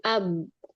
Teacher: Ab karena dia qalqalah ada pantulan.